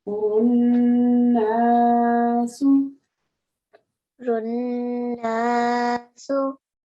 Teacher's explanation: the first noon is a sakin noon, and you can hold on to it. The second noon is the one with the fatha. So in this case, runnasu. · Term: normal shaddad